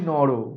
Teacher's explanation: পদান্ত অ স্বর লুপ্ত হয়ে যায়